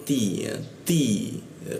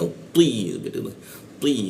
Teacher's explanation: kalau th itu lidahnya agak dilengkungkan sehingga dia agak tebal gitu